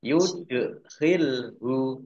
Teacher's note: Dal sukun bacaan kolkolah, dibaca memantul, ditampakkan pantulannya.